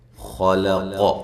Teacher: خا کو موٹا کرنا ہے، لام کو باریک، قاف کو موٹا کرنا ہے۔ اب قاف اور خا کے درمیان میں لام ہے، توجہ کے ساتھ، اہتمام کے ساتھ اس کو ادا کرنا ہے کہ لام موٹے حروف کے ساتھ موٹا نہ ہو جائے۔